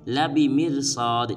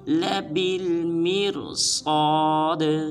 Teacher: با کے بعد جو الف ہے اس الف کو نہیں پڑھنا بلکہ با کو آگے لام ساکن کے ساتھ ملائیں گے اور را اور صاد کو پر ادا کریں گے اور آخر میں دال کو قلقلہ کریں گے۔